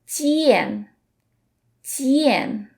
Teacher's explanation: In J, we don't let out the puff of air, but in Q we do. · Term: Chinese J sound